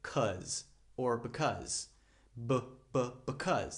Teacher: That's another schwa sound. It's really, really fast.